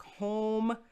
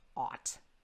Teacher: this is the difference between a closed o and an open aw